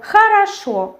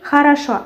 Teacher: we can write words with o, but say in a.